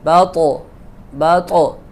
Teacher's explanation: طا کو جب ہم ادا کریں گے تو اس میں جو ہے نا وہ جنبش کی ہوگی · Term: قلقلے کی آواز